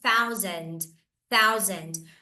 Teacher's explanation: Mais uma vez, nós temos aqui aquele TH, que é o TH desvozeado.